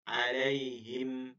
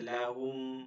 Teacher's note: মিম সাকিন যেটা মিম উচ্চারিত হয় দুই ঠোঁটের শুকনা। তাই এটা যখন মিম সাকিন হবে জজমার মিম, তখন এখান থেকে হবে মিম আম, হ্যাঁ আলাইহিম, ঠিক আছে লাহুম।